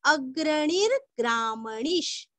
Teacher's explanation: णी दीर्घ और विसर्ग का आधा श